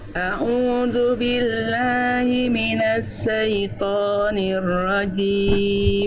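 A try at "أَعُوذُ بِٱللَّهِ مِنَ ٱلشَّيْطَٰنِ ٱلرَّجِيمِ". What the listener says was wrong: A'udzu billahi minasya. Huruf shin Bunda, bukan minasa. Tapi minasyaiton. A'udzu billahi minasyaitonir rajim.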